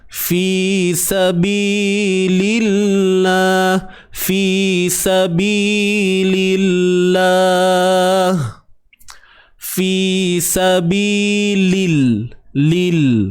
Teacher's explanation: Nak masuk dalam kalimah lam ni, lam baris bawah, nak masuk pada lam kalimah Allah ni, kena nipis.